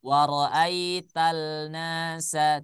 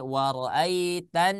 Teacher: Jadi sudah ditetapkan apabila ada alif lam bertemu dengan huruf nun, maka alif lamnya jangan dibaca.